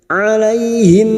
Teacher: huruf Ain lagi alaihim fathah bertemu Ya Sukun kita lunakkan alaihim mim sukun bertemu ba Ikhfa Syafawi mim sukun mendengung selama tiga harakat